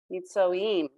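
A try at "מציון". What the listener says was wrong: Meet, see. Now you have to say the yud. Meet, see. Meet, see.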